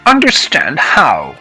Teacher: Here I connected the speech so that the H becomes a bit less pronounced. Sometimes in real life I say the H and sometimes I don't.